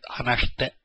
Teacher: The I in this shite is silent